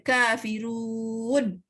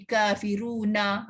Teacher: Kadang-kadang dia kena sebut pendek je ketika waqaf. Kadang-kadang kena sebut panjang ketika wasal.